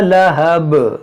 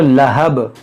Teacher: देखिए यहाँ पर भी हमने वक्फ किया तो बा पर जो ज़बर है वो साकिन होगा, तो बा में कलकला भी होगा